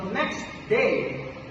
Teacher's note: in regular speech, we don't say next with a T. We say next by removing the T. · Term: elision